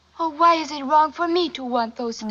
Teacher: her consonant are very soft and her vocals are elongated and this of course adds to the sensual Allure of her voice